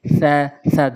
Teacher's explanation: সা জিব্বার আগে দাঁতের আগে নর্মালি